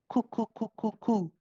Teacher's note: So the back of the tongue is moving in a backwards diagonal fashion, okay? Whereas with the kaf, the tongue is moving more vertically, and it's going to where the soft and the hard palate meet.